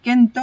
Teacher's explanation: la asimilación de lambda en ni delante de una dental